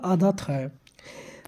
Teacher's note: हिंदी की स्पर्श अघोष महाप्राण दंत व्यंजन ध्वनि है